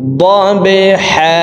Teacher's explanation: বা কলকলার হরফ নিচের দিকে ধাবিত করে ধাক্কা দিয়ে উচ্চারণ করব।